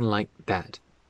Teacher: That K in like doesn't get pronounced.